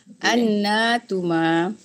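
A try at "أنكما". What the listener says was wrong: Ibu, annakuma. Kaf. Annakuma.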